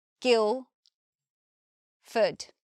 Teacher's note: when we say the word Guildford we don't hear the D we just here Gil food and importantly we don't say Ford